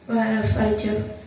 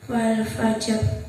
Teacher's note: Di situ ada huruf sukun karena waqaf didahului oleh huruf selainnya dan sebelumnya berharokat fathah, maka cara bacanya tebal.